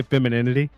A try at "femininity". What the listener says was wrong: Femininity. There's no D in it, but that's